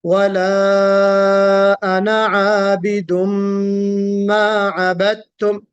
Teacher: आबिदुम में गुन्ना है, आबिदुम मा अबदतुम इदगाम वाला गुन्ना है यहाँ पे